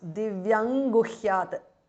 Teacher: Divyam ends in Anuswara followed by Ga. So it becomes Divyam Guhyat. Anuswara changes to Nga. Guhyat, the T changes to D because of Sandhi.